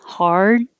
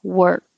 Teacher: you don't have to release the d hard and you don't have to release the k